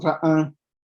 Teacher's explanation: también la vocal es larga, no importa si es un solo tono o un contorno tonal, sigue siendo larga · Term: vocal larga